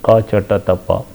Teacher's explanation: All these are the consonants of unvoiced nature, and they are stops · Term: unvoiced stop consonants